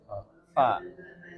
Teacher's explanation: Gigi gigi yang bertemu dengan gigi atas yang bertemu bibir bawah